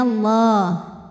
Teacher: Lam pada lafaz Allah atau lam jalalah dibunyikan secara tafkhim karena huruf sebelumnya berbaris fathah. Jadi dibacanya tebal, bunyinya Allah.